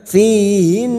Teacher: Nun yang bertasdid gunna musaddadah kita dengungkan selama tiga harakat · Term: gunnah musaddadah